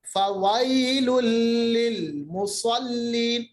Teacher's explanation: فویل وائی یا ساکن ما قبل زبر یا لین لل دیکھیے دو پیش کے بعد لام ہے یہ ادغام بلا غنہ ادغام ہوگا ملے گا اور غنے کے بغیر فویل للمصلین صاد حروف مستعلیہ میں ہے موٹا پڑھیں گے مصلین